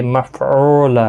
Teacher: اس کے اوپر کھڑی زبر بھی ہے، ایک الف کی مقدار کے برابر کھینچ کر بھی پڑھیں گے۔ مفعولا او واو مدہ ہے، ایک الف کی مقدار کے برابر کھینچ کر پڑھیں گے